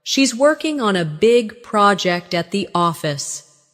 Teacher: Stress: working, big, project, and office.